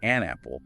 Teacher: We say an apple, linking the N sound to the A sound.